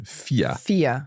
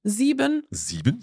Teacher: it's always pronounced in German I. So just like a very long I sound.